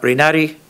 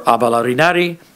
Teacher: As a question, it would come out rinari, and you get the underlying high, high tones